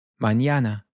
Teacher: it's almost like it has a Y immediately followed by it. So we get this ñ sound.